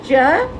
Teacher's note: च तालव्य तो है लेकिन महाप्राण नहीं है।